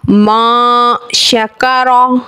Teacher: रा पर ज़बर या पेश आने की सूरत में रा को पूरी यानी मोटा पढ़ते हैं।